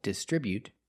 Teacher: They distribute their products with a stress on the second syllable.